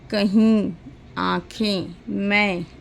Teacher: अनुनासिक स्वर, इनके उच्चारण में ध्वनि मुख के साथ साथ नासिका द्वार से भी निकलती है। अर्थात जब हम बोलते हैं तो जो आवाज़ हमारी है वो मुंह से निकलने के साथ साथ नाक से भी निकलती है।